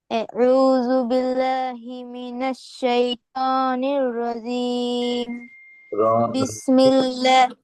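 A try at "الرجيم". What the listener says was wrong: এখানে রজিম, রজিম মাখরাজটা ঠিক আসতেছে না। রজিম, জিম, মানে ওই তোমার,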